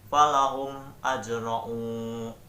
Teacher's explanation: Di situ terdapat mim mati bertemu dengan alif, sehingga dalam pembacaannya di situ harus jelas dan tidak boleh didengungkan. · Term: izhar syafawi